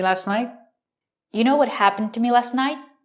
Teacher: And the T in night is a stop T. Put the tongue up and stop the air, but don't release the T. It's more common to hear night with a stop T at the end.